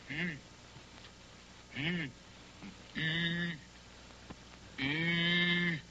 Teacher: allongeant les 2 lèvres en dehors, les approchant aussi l'une de l'autre sans les joindre tout à fait.